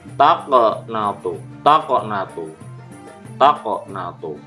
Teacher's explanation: huruf qaf bertanda sukun di tengah kalimat dibaca memantul tipis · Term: qalqalah